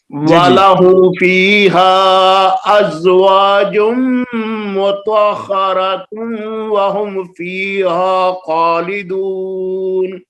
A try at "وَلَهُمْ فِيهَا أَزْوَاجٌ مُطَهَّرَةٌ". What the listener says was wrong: مطہرتن میں آپ نے صحیح ہونٹ گول کیے ہیں لیکن ازواجم میں نہیں ہو رہے.